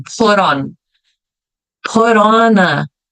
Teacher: Eu já emendo, porque é uma consoante e uma vogal. Como a gente substituiu o som da letra T pelo som de R